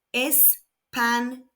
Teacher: The tilde adds a ‘y’ sound after the ‘n’ · Español ends in a consonant other than N and S, so the stress falls on the last syllable, ol.